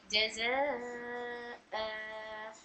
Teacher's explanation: दो जबर को एक जबर और एक अलीफ के तरह खींच कर पढ़ेंगे।